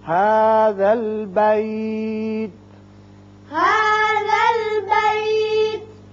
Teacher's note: هَذَا الْبَيْتِ. یہاں تا ساکن ہو جائے گا، آیت ختم ہو رہی ہے. هَذَا الْبَيْتِ.